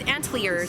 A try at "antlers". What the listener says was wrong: No, you put an I in there. Antlers. No, antlers. Antlers. You can't change. You're changing the emphasis. Not the letters.